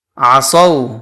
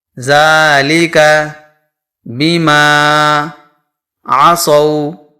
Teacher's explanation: عصو کے اندر واو لین کا قاعدہ پایا جا رہا ہے، کیونکہ واو ساکن سے پہلے زبر آ رہا ہے، اس لیے یہاں پر واو لین ہوگا. واو لین کو نرمی اور جلدی سے پڑھیں گے.